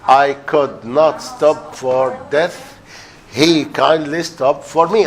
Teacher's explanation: iambic tetrameter, followed by iambic trimeter